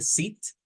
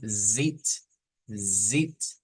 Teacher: en una solo estamos sacando el aire así en la s y en la otra estamos haciendo que el aire haga vibrar nuestras cuerdas vocales